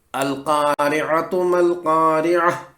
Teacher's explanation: اس شکل کی تا پر وقف کرنے کے لیے اس تا کو گول ساکن ہا میں بدلا جاتا ہے، یعنی اس تا کی جگہ گول ساکن ہا لے لیتی ہے۔ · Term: تائے مربوطہ